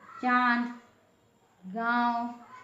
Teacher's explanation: मुंह से बोलते हुए नाक का भी प्रयोग करते हैं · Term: अनुनासिक